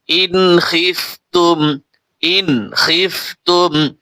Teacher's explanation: ইন এখানে কিন্তু ইজহার হবে, নুন সাকিনের পরে খ আসছে, গুণ হবে না।